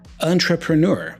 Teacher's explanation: most of the Sounds here are schwas sounds